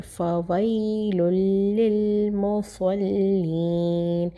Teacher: فا بہت ہی سافٹ، واو سے ملائیں گے